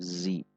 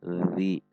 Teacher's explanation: Posisinya berada ujung lidah di bawah gigi seri atas. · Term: huruf dzal